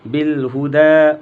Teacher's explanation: یا کو نہیں پڑھیں گے